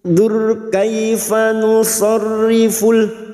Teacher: ra sukun yang didahului dhammah kita baca tafkim.